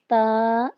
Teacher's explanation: زبان کی نوک سامنے کے 2 دانتوں کی جڑ سے لگے تو تا ادا ہوتا ہے